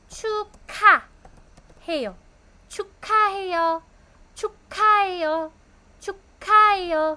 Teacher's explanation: So, dahil magkatabi po silang dalawa, nag-aspirate po yung giyok. 축하해요 na po siya. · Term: aspirated